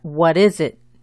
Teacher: Las dos I's son cortas y la S se pronuncia como la Z del inglés.